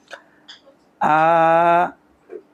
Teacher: আ হামজার উপর খাড়া জবর এক আলিফ মাদ্দে তবে, আবার আমরা জানি হামজার মাখরাজ আছে, তা মাখরাজটাও বলতে হবে। হামজা হালকের শুরু থেকে শক্ত করে পড়তে হয়